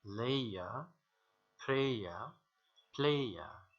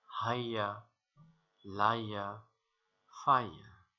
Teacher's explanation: A triphthong is a combination of three pure vowels or monophthongs. And here the first monophthong glides into the second one, and the second one glides into the third one